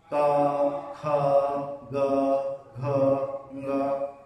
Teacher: ये शब्द का उच्चारण कहां से हो रहा है, कंठ से हो रहा है, इसलिए हम इसको कंठ ध्वनियां बोलते हैं, ठीक है। इनको हम क्या बोलते हैं, कंठ ध्वनियां बोलते हैं।